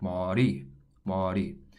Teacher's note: Saying ma-ri or ma-li both sound awkward. It's really a mixture of the R and the L sound, and it actually sounds like ma-ri, ma-ri.